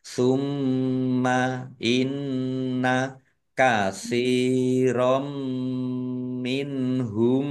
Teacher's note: Fathah tanwin bertemu dengan huruf mim. Idgham bi gunnah masuk dengan mendengung yaitu mendengung mim ditandai mimnya ada tasdidnya. Mim tasdid dibaca gunnah dan ditahan ya.